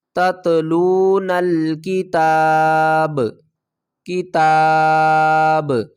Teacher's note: وقف کی صورت میں با کو ساکن پڑھیں گے اور با کے اوپر قلقلہ بھی کریں گے۔ کس طرح؟